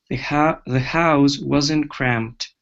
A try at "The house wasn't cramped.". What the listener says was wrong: So at the word house. Now instead of saying the house wasn't, the house, unvoiced S. The house wasn't cramped. House with the Z sound is a verb. To house someone, that means to put someone in your house.